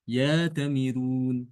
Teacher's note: Jadi nanti bacanya Imam Warsy dia rnya dibaca tipis.